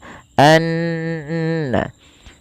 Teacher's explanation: gunahnya adalah dimasukkan ke rongga hidung kita suaranya an ya dan dia ditahan sepanjang dua harakat · Kemudian pelafal annallaha, ada bacaan gunnah yang dimana gunnahnya adalah dimasukkan ke rongga hidung kita suaranya anna, ya, dan dia ditahan sepanjang 2 harokat. Hati-hati jangan menebalkan huruf na, karena na sifat pada dasarnya sifatnya tipis.